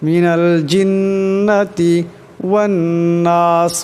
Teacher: জিন এখানে নুনের উপর তাসদীদ আছে, তাই এই নুনকে একালে পরিমাণ গুণনা করিয়া পড়তে হবে।